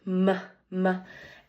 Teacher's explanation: Um the place of articulation is your lips closed. M-m-m um there is nasal outflow. So there is air pushing out of your nose